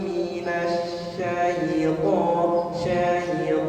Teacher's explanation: Makhrajnya dia bukan di bukan di bibir tapi di lisan ya